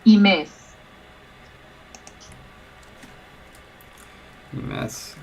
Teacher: Yeah, with stress on the second syllable.